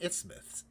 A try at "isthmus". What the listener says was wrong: Isthmus. Don't say the TH. I just say isthmus.